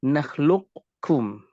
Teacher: Jadi kita menebalkan huruf, tetapi ketika mengucapkan kaf, ketika nakhluqkum, menebal tetapi yang keluar adalah kaf. Ini menunjukkan adanya idgham naqis, yaitu qafnya hilang tetapi menyisakan sifat dari qaf itu sendiri.